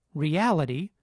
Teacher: the first vowel is unstressed, but it clearly sounds like [i], not like schwa